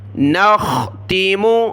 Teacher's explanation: خا کو میں نے گلے سے نکالا موٹا کر کے، کیونکہ یہاں کلرفل ہے، موٹا پڑھنا ہے۔